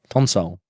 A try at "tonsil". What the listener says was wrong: Yeah, you say tonsole like console, and you spelt it like that too. You text me about this, and you put TONSOLE, which is